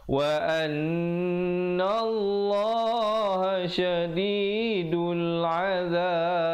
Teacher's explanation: Kemudian kalau pilih untuk waqaf di situ, terus ambil pada wa annallaha syadidul azab, dan diberikan pantulan qalqalah Qalqalah kubra pada akhirnya ba itu diberikan tanda sukun mendatang ataupun mati mendatang.